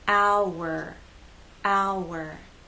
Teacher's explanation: the sounds connect with the help of the W sound